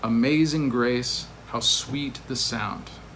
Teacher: there's a slack followed by a stress followed by a slack followed by stress and it's notated here a slack stress slack stress paired together · there are four feet in the first line each of which has one unstressed and one stressed syllable